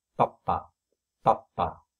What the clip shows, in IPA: papa